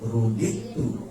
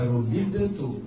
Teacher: Ilahilah qawilah atuh mudah-mudahan sering ketemu mah kita jadi kenal ya sama mansilah qilah wus ruditu ruditu dal mati ketemu ta. Ini namanya idgham mutaqoribain. Maka jangan dibaca rudid tu.